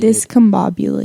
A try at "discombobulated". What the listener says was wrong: You have to say Bob in there.